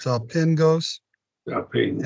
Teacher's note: the double G you'd have sounds like an NG in a way, like Angelos